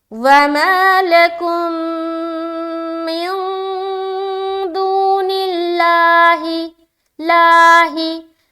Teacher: لفظ اللہ کا لام، اس سے پہلے زیر لفظ اللہ کا لام کو باریک رکھنی ہے